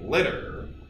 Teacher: has this pattern of stressed vowel tap syllabic R